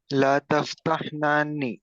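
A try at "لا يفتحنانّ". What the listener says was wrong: لا یفتحنانی, یہاں پر یا ہے.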